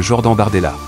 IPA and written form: ʒɔʁdan baʁdɛla (Jordan Bardella)